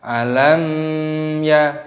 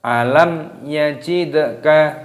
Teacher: mim sukun bertemu dengan ya dibaca idhar syafawi, jadi jangan dipanjangkan ataupun didengungkan